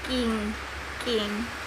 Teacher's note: The back part of our tongue is going up and touches the soft palate is velar. The English sound K, G are velar sounds.